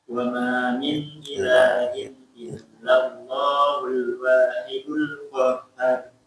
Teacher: Jangan terlalu lama ya, maksudnya di illallah. Cukup 2 harokat, ingat.